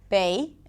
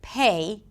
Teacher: When it comes to the P sound, when the sound is at the beginning of a word or at the beginning of a strong syllable, then the P should be aspirated